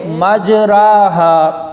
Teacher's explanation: یہ لفظ اصل میں مجراہا ایسے تھا، یعنی را کو اوپر کی جانب کھینچ کر پڑھا جاتا تھا